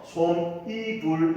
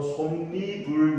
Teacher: 그래서 이 두 가지가 합쳐지는데 합쳐서 발음을 해보니까 그 사이에 없던 뭐가 생겼다? 니은 소리가 하나 생기더라. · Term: 니은 첨가